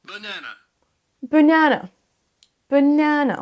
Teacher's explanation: Vous entendez bien l'accentuation sur la deuxième syllabe.